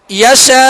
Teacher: حمزہ ساکن کر دیں گے، آخر میں جھٹکا ہونا چاہیے اور حمزہ کی آواز پر ہم رکیں گے.